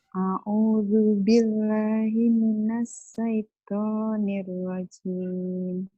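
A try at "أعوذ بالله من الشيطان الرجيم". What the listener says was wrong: Shinnya digedein. Himinash gitu. A'udzu billahi minash shin. A'udzu billahi minash.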